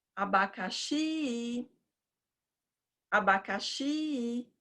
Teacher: a sílaba mais longa é o xi na chamada. Então, o xi vai ser a sílaba tônica.